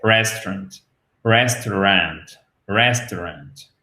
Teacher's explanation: le seul piège à la limite qu'on va vraiment avoir, c'est l'accentuation qui se fait sur la première syllabe.